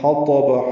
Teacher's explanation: حا وسط حلق سے ادا کریں گے